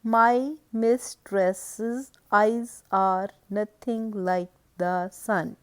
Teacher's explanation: It is followed by in iambic foot, first syllable is unstressed and the second one is stressed, and it is a foot with two syllables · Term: iambic pentameter